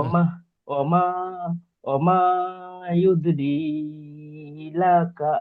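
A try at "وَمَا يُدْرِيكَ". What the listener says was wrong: ওমা ইউদরি লাকাল হয়ে যাচ্ছে, এই লামটি প্রথম হয়ে যাচ্ছে কাপ। ওমা ইউদরি কা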